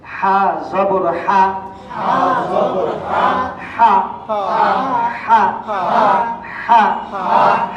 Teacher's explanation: এই হরফটা উচ্চারণের সময় আমরা শিখেছিলাম কণ্ঠনালীর মাঝখান থেকে হবে, আওয়াজটা চেপে যাবে।